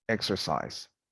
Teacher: Here, unstressed ER, like in exercise, it becomes a schwa.